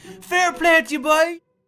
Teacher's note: everyone here speaks a few octaves higher than the rest of the country, boy. It's a little bit forlorn and a little bit melodic, and every now and again, boy is thrown in for the crack.